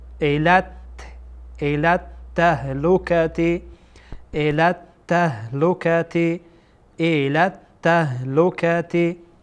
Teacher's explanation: لام با تا در اینجا یکجا خوانده میشه.